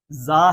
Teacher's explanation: اس کو ہم نے تیز سیٹی کی آواز کے ساتھ پڑھنا ہے